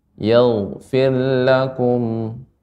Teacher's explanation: Ghain termasuk huruf isti'la, sehingga ketika sukun sebelumnya fathah ya, tebal dibaca dengan tebal.